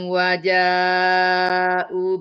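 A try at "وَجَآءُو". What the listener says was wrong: Waja'u, panjang u-nya, Bunda.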